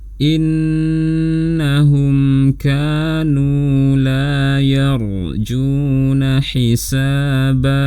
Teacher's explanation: ra sukun sebelumnya fathah dibaca tebal